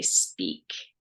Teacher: When we say speak, there's no air, it's unaspirated.